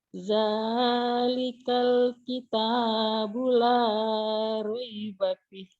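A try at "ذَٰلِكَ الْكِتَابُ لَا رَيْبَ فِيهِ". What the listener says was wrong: Fihnya juga panjang. Kalau dihentikan jadi madari disukun. Dalikal kitabul la raiba fih.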